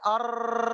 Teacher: عینی تکرار کہتے ہیں کئی رائیں ادا ہوں، یعنی ایک سے زیادہ رائیں ادا ہوں